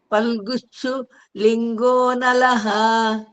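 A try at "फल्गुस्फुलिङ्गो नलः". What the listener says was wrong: ఫల్గుస్ఫు పు, ఆ పాని ఇక్కడ పూ వేయండి అంతే. ఫల్గుస్ఫు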